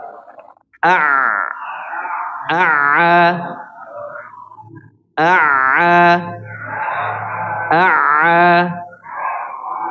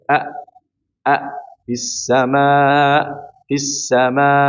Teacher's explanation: ketika mengucapkan huruf ain dalam keadaan sukun atau tasdid maka sampai menyentuh ke belakang. Maka ditekan sampai menyentuh ke belakang dia.